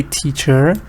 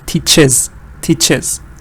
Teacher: it's the schwa when you say teacher but here it's a short e teaches teaches